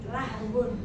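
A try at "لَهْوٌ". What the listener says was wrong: Lahwun sendagurau. Lah, wawunya tinggal monyong. Wawunya itu tinggal monyong saja alias berisyarat aja dengan bibir. Ibu bilang lah, belum monyong ya. Lah sudah bagus, habis itu baru berisyarat aja. Namanya berisyarat itu enggak kedengaran Bu ya, misalnya gini. Itu namanya berisyarat. Sama ya, isyaratan bisyafatain. Nah, berisyarat aja dengan dua bibir, tinggal monyong.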